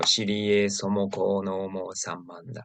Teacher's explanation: As for the last part, somoko, these are three separate syllables, but what I hear most commonly is they put it together.